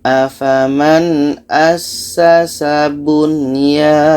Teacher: Tidak ada idgham di sini. Nun jelas, ya jelas. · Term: izhar wajib